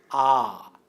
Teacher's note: اردو میں آ نچلا مصوتہ ہے، کیونکہ اس کے تلفظ میں زبان کا پچھلا حصہ نیچے کی جانب جھک جاتا ہے، لہٰذا اسے پچھلا مصوتہ کہتے ہیں۔